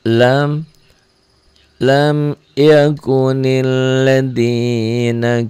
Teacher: Idhar jangan ditahan dilepas